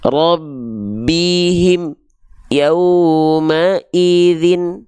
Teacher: Amnya nggak boleh ada jeda antara am dengan ya. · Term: mim sukun